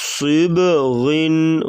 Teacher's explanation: غین کو موٹا کریں گے اور صاد کو بھی موٹا کریں گے درمیان میں جو ہے قلقلہ کر کے پڑھا جائے گا صیب